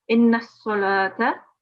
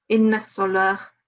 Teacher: if we were to pause, the ta marbuta at the end will change into a sakin ha